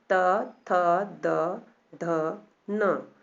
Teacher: इसको बोलते समय हमारी जो जीभ है वो दंत को, हमारे दांत को स्पर्श कर रही है ना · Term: दंतव्य